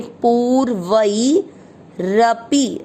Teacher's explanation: पू की मात्रा बड़ी है, लंबा खींचना है। वई पे आधा र तो पू के साथ आधा र करेंगे पूर्वई रपी।